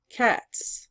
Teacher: The word cat T is also voiceless and by adding S the pronunciation will not be changed.